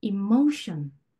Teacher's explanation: 이런 애들은 전미사 직전으로 모음이 이 직전의 모음으로 강세가 이동을 합니다. 그래서 션 이렇게 끝에 부분 바로 앞에 있는 음절 모음 소리가 나는 부분으로 강세가 이동을 하는 거예요